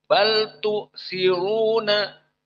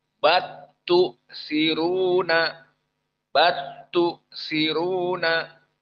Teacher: Bal tu siruna. Namun qiraah Al-Kisai di sini diidghamkan lam kepada ta. Jadi batu siruna, batu siruna.